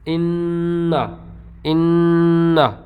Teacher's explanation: انّا، انّا، اب نا نہیں پڑھا ہم نے، انّا، تو نون کی آواز تو آئی، اخفا میں نون کے مخرج کے اوپر زبان نہیں لگتی، قریب جاتی ہے، لیکن یہاں پر زبان نون کے مخرج کے اوپر لگی لیکن ہم نے اسے خوب زور دے کے ٹھہر کے پڑھا۔ ایسے ہا نون پیش ہن، نون زبر نا، ہن ہن. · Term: غنہ